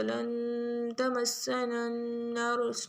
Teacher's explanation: نون پہ غنہ ہوگا اور را کو موٹا پڑھیں گے